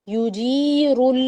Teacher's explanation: یجیر جیم یا زیر جی اس کو لمبا کریں گے اور را کو موٹا پڑیں گے